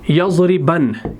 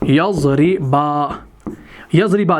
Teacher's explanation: जब आप नून पर वक्फ करेंगे, तो वो जो नून होगा वो अलिफ से बदल दिया जाएगा